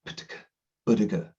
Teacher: So I've got the screen, but I'm also blowing the air, the plosives, the P's, T's, K, G, P, T, K, B, D, G, P, T, K, B, D, G. The only difference between the first three and the second three is voice off, voice on.